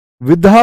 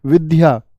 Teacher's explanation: यह हमको धा दिखता है लेकिन होता क्या है दा और या होते हैं विधा बोल देते हैं हम विद्या क्या बोलते हैं हम विद्या